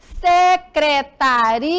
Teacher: Mas na hora de pronunciar, eu percebo que eu pronuncio ria, mais forte, ó. Secretaria.